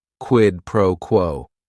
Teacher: Each word is only 1 syllable. And if you're saying it together, the stress is kind of on that first word and that last word